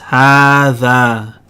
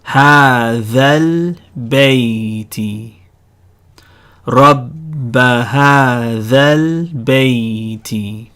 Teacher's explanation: However, the rule is whenever you have a long vowel followed by a letter with a sukoon on it, you're going to lose that long vowel. So هذا, the alif gets chopped off and you're going to join the dhal to the lam